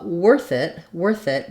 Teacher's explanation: we have the letters th are a voiceless th like we have in think or in both